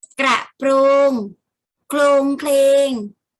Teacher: เวลาออกเสียงจะออกเสียงพยัญชนะต้นพร้อมกัน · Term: คำควบกล้ำแท้